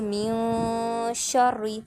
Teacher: نون کی آواز کو چھپائیں گے تو تھوڑا سا ہم لمبا کر دیں گے، یعنی غنہ کر دیں گے، آواز کو جو ہے وہ ناک میں لے جائیں گے 2 سیکنڈ کے لیے